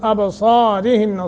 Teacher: صاد موٹا اور با پہ قلقلہ